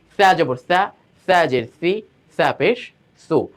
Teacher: সায়ের মাখরাজ কি জিবার আগা দাঁতের আগার সঙ্গে লাগবে উপরে, আর সিনের মাখরাজটা কোথায়, জিবার আগা নিচের দাঁতের পেটের সঙ্গে গিয়ে লাগবে।